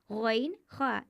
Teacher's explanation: गैन खा हलक के ऊपरी हिस्से से अदा होते हैं